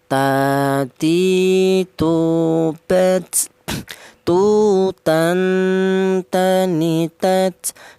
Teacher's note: Untuk huruf ta ini keluarnya huruf berasal dari ujung lidah menyentuh pangkal gigi seri atas